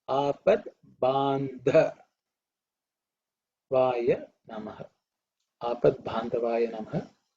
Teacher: So it is a compound consonant with Ba. But here the Ba is not aspirated. So it is the third letter in the Pa Varga.